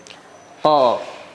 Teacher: Hurufnya qaf. Huruf qaf ketika berharokat fathah tidak boleh memonyongkan bibir, akan tetapi mengangkat pangkal lidah. Qaf, pangkal lidah yang diangkat ke langit-langit.